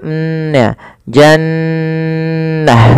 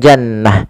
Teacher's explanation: Cara membacanya adalah suara nunnya ditahan dulu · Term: gunah